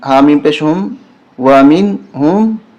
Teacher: واو زبر وا، میم نون زیر مین، یہاں غنہ نہیں ہوگا، نون ساکن کے بعد ہا حرف حلقی ہے۔ 6 حرف حلقی ہوتے ہیں، اگر وہ آ جائیں نون ساکن کے بعد یا تنوین کے بعد تو وہاں غنہ نہیں ہوتا۔